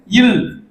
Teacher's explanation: மேல்வாய் பல்லின் அடியை நாக்கின் ஓரங்கள் தடித்து நெருங்குவதால் பிறக்கும் எழுத்து